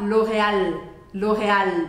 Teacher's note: engolir então a gente faz Loreal em francês você vai falar Loreal Loreal deixando esse L bem marcadinho aí a gente tem o r no meio né E esse